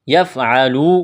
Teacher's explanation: واو مدہ ہے، ایک الف کے برابر کھینچنا ہے